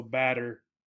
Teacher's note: the double tees particularly in American English changed to a D sound